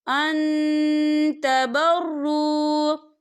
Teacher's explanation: نون ساکن کی آواز کو ناک میں چھپائیں گے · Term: اقفا